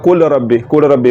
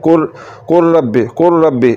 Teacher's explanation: कुर कैसे पढ़ेंगे कु ऐसे नहीं पढ़ना कुल रबबी कुल रबी लाम को रा में मिलाने से लाम जो है यह खत्म हो जाएगा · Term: मुकम्मल इदम